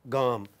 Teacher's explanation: Voiced, velar, then plosive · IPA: /g/